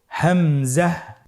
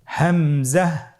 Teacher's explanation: হামজা হরফটি উচ্চারণের স্থান হায়ের মতোই। হা হরফটি যেখান থেকে আমরা উচ্চারণ করেছি একই জায়গা থেকে আমরা হামজা হরফটি উচ্চারণ করব হলকের শুরু হতে। · হামজা হরফটি উচ্চারণ ক্ষেত্রে বারিক করে উচ্চারণ করতে হবে এবং এখানে টেনে পড়া যাবে না, দ্রুত পড়তে হবে।